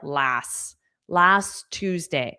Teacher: This T on last was totally silent. So, it just sounded like last last Tuesday.